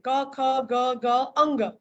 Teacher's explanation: હવે ઉચ્ચારણને આધારે જોઈએ તો કંઠ્ય, બરાબર, જીભનો પાછળનો ભાગ ઊંચો થઈ અને પાછળ કોમળ તાલવાને જઈને સ્પર્શે, એ કંઠ્ય વ્યંજન.